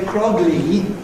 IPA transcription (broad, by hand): k.r.ɒ.g.l.iː